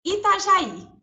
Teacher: Última sílaba mais forte. É uma oxítona? Sim.